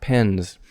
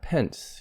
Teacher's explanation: n is voiced so the s ending gets voiced pens not pence you don't want to say pence pence is · And so another thing here is the S is voiced. N is voiced, so the S ending gets voiced.